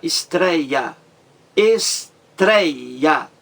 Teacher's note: a mais forte é a penúltima · existe aí também o ditongo aberto tonico forte